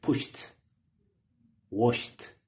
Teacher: So when ED is added, like push plus ED, it has to be pronounced with T sound instead of D